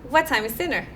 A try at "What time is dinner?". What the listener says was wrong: That was a good speed, but make the word dinner a little longer.